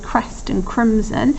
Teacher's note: we've got this sort of alliteration of quite a hard C sound here with crest and crimson, and that's a plosive sound. And I think what's happening at this point is there's a storm that's brewing, okay, so potentially this is showing us the threat of the storm that's there.